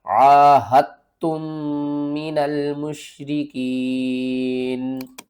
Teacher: اِلَّا الَّذِينَ آہدتم من المشرکین، عاہدتم، آپ نے ہا کو تا کے ساتھ ملانا ہے، دال کے ساتھ نہیں ملانا، تا کو ہم سختی سے پڑھیں گے، 2 بار پڑھیں گے